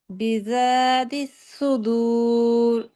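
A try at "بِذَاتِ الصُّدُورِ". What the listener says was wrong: তিস এভাবে সদ উচ্চারণ করতে হবে। তিস সুদূর। তিস সদ, এটা সায়ের উচ্চারণ এসে পড়ে। সদ বলেন তো আপু। জি, এ সদ যে একটা উচ্চারণ করছেন এরকম সটা উচ্চারণ করতে হবে। বিযাতিস সুদূর।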